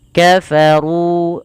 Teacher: ru-nya tebal karena dia di sini ra berharakat dhommah dan kita namakan dengan ra tafkhim